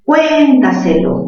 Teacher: Mayor fuerza en la sílaba, cuen. Ajá, mayor fuerza en cuen sería una palabra sobre esdrújula, ¿verdad?